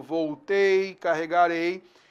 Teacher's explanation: o ditongo fechado, voltei, carregarei, que são oxítonas terminadas com ditongo oral, fechado